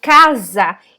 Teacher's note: E o A é o A, porque quando eu falo casa, embora seja o S aqui, na verdade eu tô falando Z